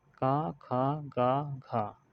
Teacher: का से लेके माँ तक हम वर्गीय व्यंजन भी कहते हैं, और बोलने के आधार पर उच्चारण स्थान के आधार पर हम इसको अलग अलग स्थान से बोलते हैं। जैसे कि का वर्ग के जो व्यंजन होते हैं इन्हें हम कंठ से बोलते हैं